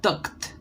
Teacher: haciendo esa énfasis en el sufijo ed y lo cambiamos por una T